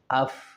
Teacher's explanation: سب سے پہلے فا ہے، تو ہر حرف کا مخرج معلوم کرنے کے لیے اس کے شروع میں حمزہ متحرک لے کر آئیں تو بن جائے گا اف. اف یعنی نیچے کا ہونٹ اور اوپر والا دانت، یہ دونوں آپس میں ملائیں گے تو بنے گا اف. تو یہ فا کا مخرج ہوا.